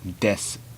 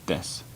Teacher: you don't pronounce the U at the end, or at least you devoice it where it's extremely quiet and fast, so it's actually pronounced des.